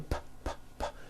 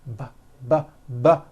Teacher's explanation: the P sound has no voicing and the B sound, b, b, does have voicing